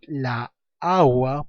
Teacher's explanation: Entonces, yo no puedo decir la agua porque agua es un sustantivo que se sabe dividir en dos sílabas, pero la sílaba tónica recae en la primera A, o sea, en la primera sílaba segmentada